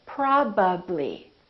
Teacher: my lips have to open and close three times